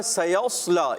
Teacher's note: سین باریک، صاد کو موٹا رکھیں گے